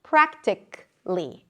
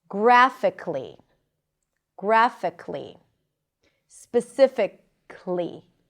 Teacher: you may not even pronounce the schwa at the beginning. It's like the A is eliminated.